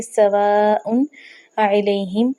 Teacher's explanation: دونوں جو ہے لفظ ہے نا ان کو ملا کر نون تنوین کو پڑھا گیا ہے